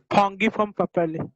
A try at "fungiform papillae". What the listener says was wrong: वो फंगी form नहीं है, फंजी फॉर्म. फंगस में आप जिसको ग प्रोनाउंस करते हो, बट फंजी फॉर्म में उसको ज प्रोनाउंस करते हैं.